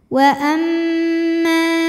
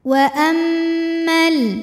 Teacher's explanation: didengungkan bunyi m-nya tahan sampai ada suara masuk hidung wa Amma jika berhenti di ma hukumnya adalah Mad Thobi'i karena ada Alif yang didahului fathah maka dibacanya panjang mimnya dua harakat wa ammal nah dua harakatnya tuh hanya saat berhenti kalau wasal